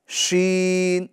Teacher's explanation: ये वाली जो शीन है तो इसके अंदर क्या करेंगे? जो जबान का बीच वाला हिस्सा है, इसको ऊपर बीच तालू के अंदर लगाएंगे। तो ये शीन अदा होगा।